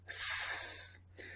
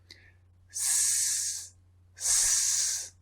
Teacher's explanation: the S sound, S, is unvoiced because there's no vibration.